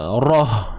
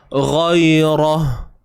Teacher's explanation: Ra baris atas, ra tebal. Matikan huruf ha.